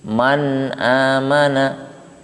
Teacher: Maka di sini ketika kita membahas nun sukun, maka kita tidak boleh keluar dari koridor nun itu sendiri yang mempunyai sifat tawasud, artinya mengalir, tetapi mengalirnya tidak penuh karena bukan rokhawah ya. Jadi tengah-tengah antara syiddah dan rokhawah, tetapi sifat mengalirnya tetap ada walaupun tidak penuh ya, tidak seperti rokhawah.